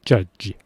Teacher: 추위 입모양을 하는데 유성음으로 하니까 우리말에서 지읒처럼 들리게 돼요.